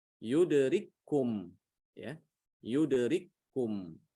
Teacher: Ada kaf ketemu dengan kaf, maka kafnya diidghamkan ke kaf yang kedua.